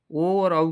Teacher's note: इसका उच्चारण स्थान ओष्ठ है। तो कंठ और ओष्ठ दोनों से बोले जाए, इसलिए ये कंठोष्ठ बोलेंगे